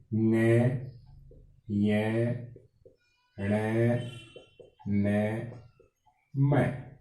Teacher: ये पंचम वर्ण है और इनकी ध्वनि है वो नाक से निकलती है। इनका उच्चारण करते समय श्वास वायु है वो नाक से निकलती है। तो ये नासिक्य वर्ण है, पंचम वर्ण।